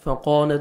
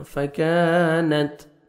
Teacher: الف مدہ 1 سیکنڈ آپ نے کاف کو کھینچنا ہے اور کاف کو باریک پڑھیں گے. فَكَانَتْ فَقَانَتْ نہیں پڑھنا، فَكَانَتْ تا کا ہلکا سا ساؤنڈ آئے گا، لائٹ سا ساؤنڈ آئے گا.